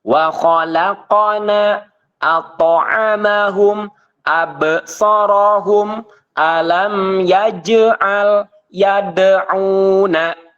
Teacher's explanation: huruf Qalqalah yang sukun di tengah kalimat maka disebutnya adalah Qolqolah Sugro ataupun pantulan yang kecil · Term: Qalqalah sugro